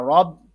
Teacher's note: را کو موٹا پڑھنا ہے کیونکہ را کے اوپر زبر ہے